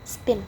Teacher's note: spin diucapkan tanpa hembusan